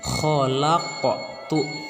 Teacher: huruf qafnya dipantulkan menjadi khalaqtu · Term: qalqalah sugro